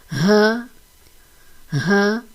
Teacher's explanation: ہا کی ادائیگی وسط اقصی حلق سے ہوتی ہے، جو کہ حلق کا سب سے نچلا حصہ جو سینے کی جانب ہوتا ہے وہاں سے ہا کی ادائیگی ہوگی۔ ہا کو ادا کرتے وقت